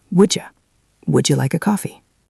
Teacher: Listen to how the would and the you become one unit.